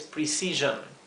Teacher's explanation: La O, siempre que una palabra en inglés termina en ON, ¿sí? O I o N, la O se pronuncia como un sonido intermedio entre una O y una E